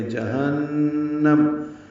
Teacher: جہاں بھی ہو نون مشدد پہ غنہ کریں گے. جہنم، نون میں آواز ناک کے بانس سے ملے جائیں گے غنہ کرتے ہوئے